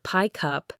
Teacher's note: So pickup doesn't sound like pick than up. It often sounds like pie cup with the K sound carrying over. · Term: linking consonants to vowels